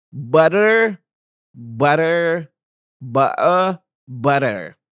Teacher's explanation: it happens when the tongue Taps very briefly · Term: flap